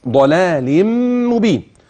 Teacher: واول كلمه مبين حينما تصل اذا وقفت ضلال لاضطرار او الاختبار اذا وصلت عليك ان تاتي بالغنه مع تشديد الميم